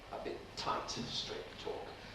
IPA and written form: ə ˈbɪt̚ ˈtaɪt ən ˈstreɪt̚ ˈtɔːk (A bit tight and straight talk)